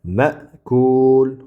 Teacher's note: bu zamma harakatidan keyin kelgan harakatsiz vav bu mad bo'ladi. Cho'zamiz buni.